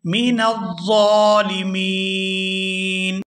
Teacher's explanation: آخر سے نون کو وقف کی وجہ سے ساکن کر دیا جائے گا، اور یہاں نون ساکن ہونے کی وجہ سے مد ہوگی تو اس کو کھینچتے ہوئے پڑھیں گے من الظالمین۔